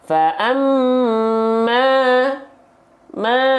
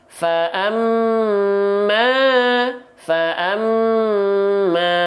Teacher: dibaca dengan kadar panjang dua harakat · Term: Mad Thobi'i